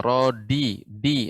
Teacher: Untuk dal, rodi, ya, pengucapannya dia dal ketika dia dengan punggung ujung lidah, dia tidak terlalu bulat suaranya, tidak kuat hentakannya.